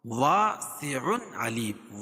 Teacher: سع علیم اظہار حلقی ہوگا کیونکہ تنوین کے بعد حروف حلقی کے 6 حرفوں میں سے عین ہے تو یہاں اظہار کر کے پڑھیں گے.